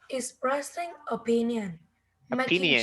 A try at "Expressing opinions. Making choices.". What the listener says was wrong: There's S, okay?